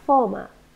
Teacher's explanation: former two syllables we stress the first one